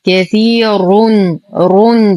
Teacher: لدينا يا ساكنة ما قبلها مكسور فهو مد طبيعي. الراء مضمومة فهي مفخمة